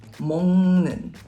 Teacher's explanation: when the 받침 ends in a 기역 or a 기역 variation, then the 받침 turns into 이응